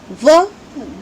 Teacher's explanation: ये देखिए इसके अलावा जो व वर्ण है, जो अंतस्थ वर्ण है, व उसका उच्चारण स्थान है दंतोष्ठ, यानी उसका उच्चारण दांतों और होठों दोनों की मदद से किया जाता है। आप व का उच्चारण करके देखिए, व दंतोष्ठ यानी दांतों और होठों की मदद से इसका उच्चारण किया जाता है।